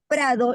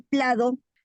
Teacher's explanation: este allí lo que está cambiando no está cambiando dos sílabas en realidad está cambiando solamente la r por la l no O sea un grupo consonántico por otro grupo consonántico está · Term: sustitución entre líquidas